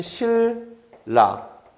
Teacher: 지금 신라 같은 경우에는요, 내가 일부러 신라라고 발음했는데 발음할 때 보면 실라, 인접한 두 자음이 그냥 같은 소리가 됐죠. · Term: 완전 동화